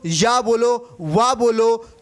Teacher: ये व्यंजन क्या है, स्वरों के जैसे सीधे बोल दिए जाते हैं, इसीलिए हम इनको अर्धस्वर बोलते हैं।